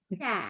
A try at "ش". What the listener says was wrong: you bukan, tapi sha langsung sha. Sha. Ya, sha harus hati-hati.